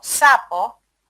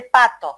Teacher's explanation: si bien los dos fonemas iniciales son sordos, sapo y pato, la duración de esos fonemas es diferente